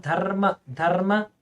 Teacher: ದಕಾರ ಅಲ್ಪಪ್ರಾಣ ಆಗಿತ್ತು ಮಹಾಪ್ರಾಣ ಆಗಬೇಕು